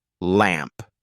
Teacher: let the tip of your tongue touch the roof of your mouth gently right behind your upper front teeth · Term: L Sound